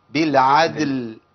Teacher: يبقى ايه بالعدل، لابد من قلقله ده، ولا اقول بالعدل ما تنفعش، لازم قلقله الدال مع ايه اسكان اللام